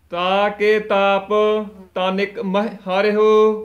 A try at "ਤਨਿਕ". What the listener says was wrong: ਤਨਿਕ ਦੇ ਨੰਨੇ ਨੂੰ ਸਿਹਾਰੀ ਲੱਗੀ ਹੋਈ ਹੈ, ਤਨਕ ਨਹੀਂ ਕਹਿਣਾ, ਤਨਿਕ ਉਚਾਰਨ ਕਰਨਾ ਹੈ।